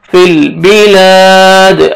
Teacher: الف مدہ ایک الف کے برابر آپ نے لام کو کھینچنا ہے اور دال وقف کی صورت میں دال ساکن ہو جائے گا · فا کو لام کے ساتھ ملائیں گے، لام کو آپ نے ہلانا نہیں ہے ، فل بلاد، الف مدہ ایک الف کے برابر آپ نے